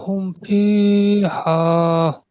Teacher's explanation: মিমকে বিনা গুণনায় জাহির করে তাড়াতাড়ি পড়তে হবে। একে ইজহারে সাফাবি বলে।